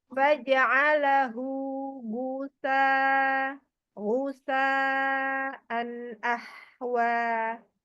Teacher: Hu itu yang H besar ini ada di bawah tuh bawah tenggorokan kalau Gin kan Itu di atas Oh iya jadi ya pangkal